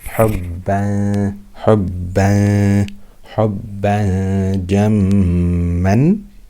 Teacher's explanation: I'm not saying hubbad jamma. I'm hiding the tanween with ghunna for 2 harakat.